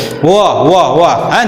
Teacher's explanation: व का उच्चारण कहां से होता है? दांत और ओष्ठ से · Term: दंतोष्ठ, दंतोष्ट